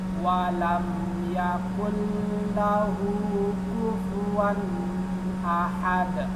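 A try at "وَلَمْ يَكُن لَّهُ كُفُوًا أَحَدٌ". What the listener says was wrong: Wan ini jangan dilamakan karena depannya hamzah.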